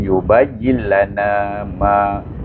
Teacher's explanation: mim di atas ma bertemu juga dengan alif. Maka baca dengan mak asli juga dua harakah